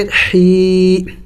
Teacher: ح یا زیر حی، ح حروف حلقی میں سے ہے اور وسط حلق سے ادا ہوتا ہے